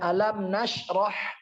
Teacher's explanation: Haknya harus bersih. Jangan ada disangkut-sangkut dengan seperti huruf kha gitu, harus bersih. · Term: hak kecil